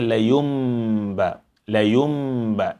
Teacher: The noon is turned into mim. And thereafter, you have to apply ghunna. And only after the ghunna, you pronounce the active ba.